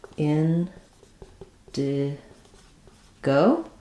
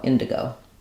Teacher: in Indigo we stress on the in syllable